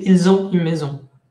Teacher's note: hay una s que no se pronuncia normalmente, pero que ahí, como hay una cosa que empieza con vocal, entonces sí se pronuncia, pero con forma de Z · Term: la liaison